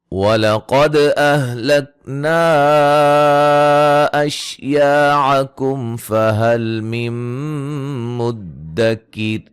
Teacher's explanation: قاف کو موٹا، دال پہ قلقلہ، مد جائز، الف مدہ، میم ساکن کا اظہار، نون ساکن کا ادغام مع الغنہ، را کو باریک پڑھیں گے وقفاً وصلاً.